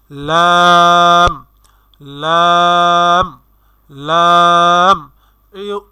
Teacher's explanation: জিহ্বার আগার কিনারা সামনের উপরের এক পাশের দাঁতের সঙ্গে লাগাইয়া উচ্চারিত হয় একটি হরফ